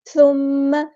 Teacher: میم پہ غنہ زمانی ہو رہا ہے تو ایک الف کے برابر رکیں گے